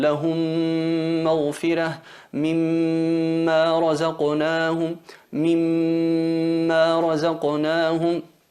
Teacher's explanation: Esa M muda la fusionamos en la otra que lleva vocal y se convierte en una M reduplicada con nasalización. Eso sería el idgham, sería la fusión labial.